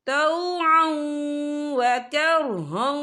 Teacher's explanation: یہ دیکھیں طوعا، عین کے پر تنوین ہے، تنوین کے بعد جو ہے واو آ رہا ہے، اور واو جو ہے حروف یرملون میں سے ہے، تو یہاں پر ادغام ہوگا، تھوڑا سا غننے کے ساتھ پڑھیں گے